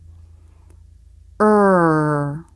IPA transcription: ɹ